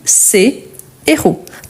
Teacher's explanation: par contre je ne fais pas la liaison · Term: h aspiré